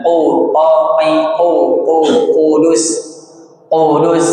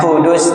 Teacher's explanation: Huruf qo kalau kasrah qi kalau domah q tetap tebal pangkal lidah dalam bagian dalam